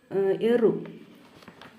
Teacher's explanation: മൂർധന്യം അല്ലെങ്കിൽ നെറുകയുടെ സഹായത്താൽ ഉച്ചരിക്കുന്നവയാണ് എറു